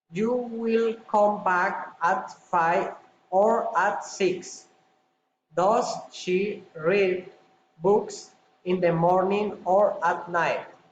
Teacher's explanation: Alternative question, rising and falling intonation.